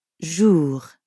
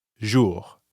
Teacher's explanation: And the R at the end of jour doesn't really sound like an English R. You should feel that R in your throat. Jour. Yeah, almost like you're gargling or clearing your throat.